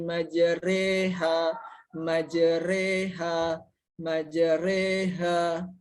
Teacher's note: Huruf ro-nya itu dibaca re, majre gitu ya, majre, atau huruf ro-nya dibaca dengan tarkik dan tipis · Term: imalah